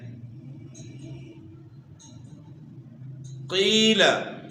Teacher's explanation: قاف کو ہم نے موٹا کر کے پڑھنا ہے، زبان کی جڑ اور اوپر کے تعلق سے قاف کو ادا کرنا ہے، موٹا کرنا ہے، قاف موٹے حروف میں سے ہے۔